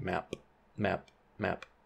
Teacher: these voiceless stops are getting the plus C G feature or plus constricted glottis feature · There's kind of a quick closure at the end there. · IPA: [mæˀp]